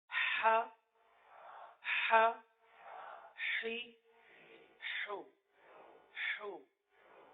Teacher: پہلے مخرج سے, کیونکہ اس کا جو مخرج ہے وسط حلق, یعنی حلق کا درمیان, حلق کا درمیان, یہاں سے یہ حرف ادا ہوتا ہے. تو پہلے حرف کی ادائیگی, پھر اس کے بعد حرکت کی ادائیگی.